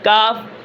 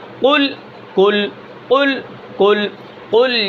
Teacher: اب یہاں پر دیکھیں، اگر ہم قاف کو یعنی زبان کی جڑ اور اس کے مقابل اوپر کا تالو، اگر وہاں سے قاف کو ادا نہ کریں تو پھر مخرج تھوڑا سا تبدیل کر کے تھوڑا سا آگے زبان کو اوپر لگا دیں